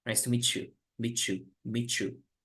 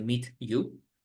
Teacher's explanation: Y la T con este suena como una che.